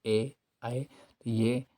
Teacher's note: ए ऐ कंठ से आवाज इनकी निकलती है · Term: कंठ तालव्य